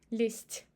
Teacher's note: And the same with лезть, лезть. Z becomes devocalized because of following t, лезть, and we pronounce it as s.